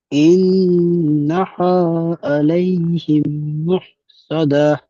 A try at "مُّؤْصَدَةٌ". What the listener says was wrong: মু মুহ এমন নয়, মু।